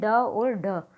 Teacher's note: इनका उच्चारण स्थान मूर्धा होता है। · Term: उत्क्षिप्त व्यंजन